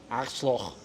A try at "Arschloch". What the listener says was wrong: No, you missing the R. Arsch. Loch. Arschloch.